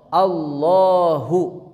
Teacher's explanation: Didahului oleh harakat fathah atau domah. Bunyi a atau u. Kesananya lafaz Allah dibaca tebal ya. Lam jalalah lafaz Allah. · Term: tebal tafkhim